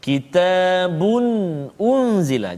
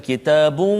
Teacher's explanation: tanwin bagi depan 2 bertemu dengan hamzah. Kitabun unzila. Jadi tak boleh dengung kat situ. Jangan kitabun, tak boleh. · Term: izhar halqi